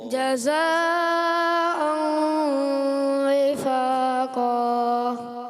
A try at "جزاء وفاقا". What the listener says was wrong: مد بھی آپ نے کمزور کر دی، مد کو بھی کھینچنا ہے آپ نے، اور کھینچنا ہے. غور سے توجہ سنیں گے نا، اور آواز آخر میں بھاری رکھنی ہوتی ہے، ٹھیک ہے؟ آواز بھاری کریں. جزاء وفاقا